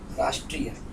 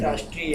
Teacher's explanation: राष्ट्रीय शब्द संस्कृत में ह्रस्व होता है, राष्ट्रीय। अब हिंदी में दीर्घ होता है।